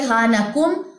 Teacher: نون ساکن کے بعد کاف، حروف اخفا میں سے کاف آیا ہے تو یہاں پہ اخفا کریں، غنہ ہوگا